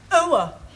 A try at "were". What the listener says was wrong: Almost. Try again, but this time, don't say ower, just were. Were.